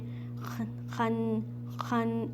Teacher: ख्वा का मखरज अदनल हलक, अदनल हलक कहते हैं हमारा गले का जो ऊपर वाला हिस्सा है